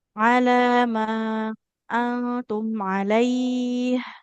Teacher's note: di antara lam dengan mim lebih panjang huruf mim. Lam ini cuman dua harakat.